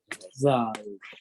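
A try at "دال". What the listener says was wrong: Dal. So don't say da or za, especially don't say za because it's not za, it's a dal with the tongue coming out.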